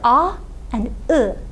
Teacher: the two vowels in Turkish that you articulate at the back of your mouth without rounding your lips. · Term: back unrounded vowels